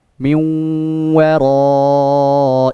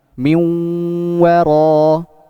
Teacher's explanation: cara membaca nun sukun dan waw tersebut itu dengan cara gunnah